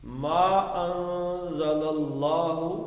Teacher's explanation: میم زبر الف ما مد اصلی بن گئی ہے جی. آگے حمزہ آ گیا تو اب اس کو مد دے دی